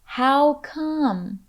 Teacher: Listen for the falling intonation with this phrase. How come? The voice falls on the final syllable.